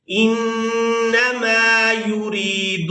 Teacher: یا دیکھ رہے ہیں یہ یا مدہ ہے، تو را کو یا مدہ کے ساتھ ملاتے ہوئے کھینچ کر ادا کریں گے